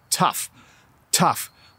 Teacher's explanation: My tongue is actually on the roof of my mouth when I say that word, tough, and it makes an F sound at the end